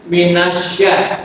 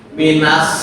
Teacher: Syin itu tengah lidah dengan langit-langit bagian tengah.